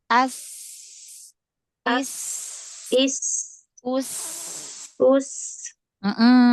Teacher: Kalau dia sofir pada huruf sin, dia ujung lidahnya lebih dekat ke gigi seri bawah, tapi nggak nempel ya, dibandingkan dengan ketika makhraj mengucapkan huruf shin, maka ujung lidahnya lebih jauh ke belakang. · sofir itu kan suara yang tajam, desisan yang tajam